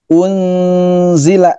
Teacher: Unzila, nun matinya seakan-akan mengucapkan huruf zai. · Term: ikhfa